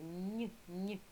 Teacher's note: Це означає пом'якшений приголосний